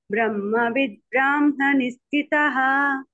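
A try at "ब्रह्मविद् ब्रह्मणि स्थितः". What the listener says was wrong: ఆ దీర్ఘం లేదు హ ఉంది ఇక్కడ ఇక్కడ అంతే హ కి దీర్ఘం లేదు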